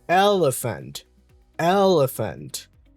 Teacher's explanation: So the second E is a schwa and the A is also a schwa.